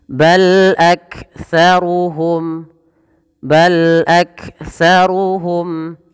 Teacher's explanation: mim mati bertemu dengan lam maka dibaca dengan bacaan izhar syafawi jelas Suara mimnya